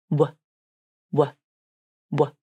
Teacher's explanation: The W consonant is a voiced consonant, which means the vocal cords are turned on as you say it. · For the W consonant, there are two movements that happen. The lips move forward and round into a tight circle, while the back of the tongue moves up and back towards the soft palate. But the airflow is not stopped by this movement. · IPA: /w/